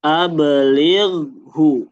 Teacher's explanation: Jadi di sini dipantulkan ba, di ghoinnya dialirkan ya. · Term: qalqalah